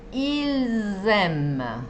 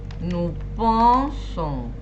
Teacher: Ahora, si la palabra siguiente empieza por vocal, van a escuchar ese Z. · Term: la liaison